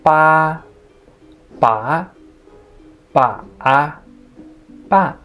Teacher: Here are 4 words made of different tones. So this is the flat tone, rising tone, falling and rising tone, falling tone